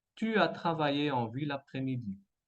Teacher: En deuxième, enchaînement vocalique entre la E et la AN. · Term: enchaînement consonantique